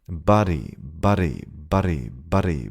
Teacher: eventually the D won't sound like a D, but like a rolling R